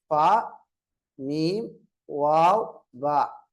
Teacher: இந்த நான்கு எழுத்துக்களும் உதட்டின் எழுத்துக்கள் உதட்டிலிருந்து வெளியாகக்கூடிய எழுத்துக்கள்